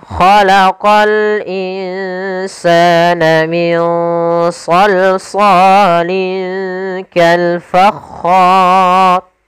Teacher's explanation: Kemudian di sini hukum rnya ro yang dibaca dengan tebal maka dinamakan ra tafkhim